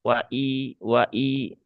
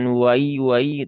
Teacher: Kemudian waila hamzah di sini ya pastikan tadi sudah dibahas ya hamzahnya tahqiqo ya. Bukan hamzah yang tahfif, bukan hamzah yang imala, tapi dia terbaca jelas kasrah.